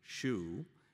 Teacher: the voiceless uh palatal as in shoe